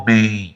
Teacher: Você ficar com esse homem, então tá nasalizado, tá? Então, a presença desse último M nasaliza o E. · quando você pronuncia uma palavra, o ar, ele sai pela boca e pelo nariz junto.